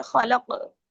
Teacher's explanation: काफ जो है उसको मोटा भी पढ़ेंगे क्योंकि ये हरूफ मुस्तालिया में से है